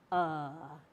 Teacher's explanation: you open your mouth and just say uh it's right in the middle of your mouth